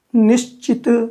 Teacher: तो इस स के साथ जब इसको मिलाते हैं तो च बोलने के लिए यह भी तालु पर चला जाता है, तो यह तालव्य स बन जाता है। निश्चित, च के साथ स का च हो गया।